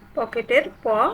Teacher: পকেটের প অঘোষ অল্প প্রাণ